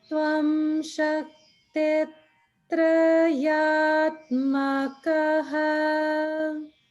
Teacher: Just only thing is that the tra sound is the upper note.